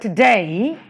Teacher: For example, in the word today, there are two syllables, to and day. The first syllable to is unstressed, while the second syllable day is stressed. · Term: iambic foot